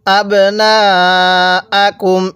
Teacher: নুনের মধ্যে আমরা চার আলিফ টান দিব কেন আমি একটু আগেই বলছিলাম মদের হরফের উপর এরকম মোটা চিহ্ন · নুনের মধ্যে আমরা ৪ আলিফ টান দিব